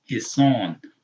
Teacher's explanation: the aleph is elongating that fatah